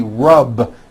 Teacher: the word rub ends with a voiced B